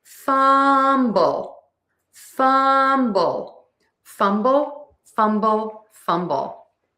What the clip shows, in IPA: ˈfʌm.bəl